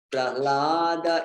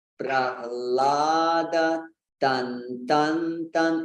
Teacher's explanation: So sometimes it's saying Prahlada, but it has to be Prahlada. So pra is also a heavy syllable, and you have to give it some time. You have to give it some weight. It's not Prahlada, it's Prahlada, tan, tan, tan.